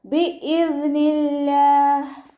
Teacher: അവ്വാ എന്നുള്ള നാമത്തിൻ്റെ മുന്നിലുള്ള അക്ഷരത്തിന് കെസ്റ വന്നു. അതുകൊണ്ട് നമ്മൾ അവ്വാ എന്നുള്ള നാമത്തിലെ ലാമിനെ ലൈറ്റാക്കി താഴ്ത്തി ഉച്ചരിക്കുക